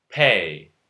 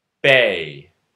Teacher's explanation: Voicing alone changes. P and B are both bilabial stop consonants. P is unvoiced, B is voiced.